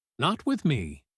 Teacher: not with me falls softly at the end, simple and reassuring